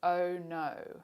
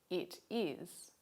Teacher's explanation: notice the shape of your lips they're rounded